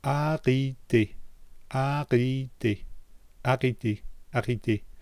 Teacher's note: I'm not making the mistake of lifting the tip of my tongue up to make the T